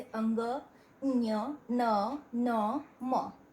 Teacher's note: तो हमारे नाक का भी यूज़ होता है मुंह के साथ, इसलिए ये नासिक के व्यंजन कहलाते हैं